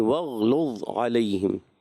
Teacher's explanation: وغلظ غین میں کلکلہ نہیں